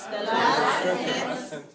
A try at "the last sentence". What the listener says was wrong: Not sentence. Sentence. Second syllable, weak, short. Not sentence. Sentence. Strong and then weak. Not sentence, but sentence. Make sure your mouth is making big, small. Sentence.